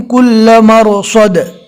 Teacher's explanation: کل مرصد رو کو بھی پور پڑھنا ہے